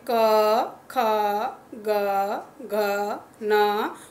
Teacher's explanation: जिह्वा मूल जो जीभ के बिल्कुल नीचे वाला हिस्सा होता है वहाँ आपको वाइब्रेशन या कंपन महसूस होता है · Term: क वर्ग